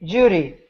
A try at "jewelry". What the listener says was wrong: Close, but you need jewel. Jew. jewelry. Jewelry.